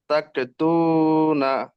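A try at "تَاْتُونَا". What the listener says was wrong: তাক পড়ছেন কেন? তা একটু ঝাটকা মতন হবে, তা। তাক কবা আসছে কেন?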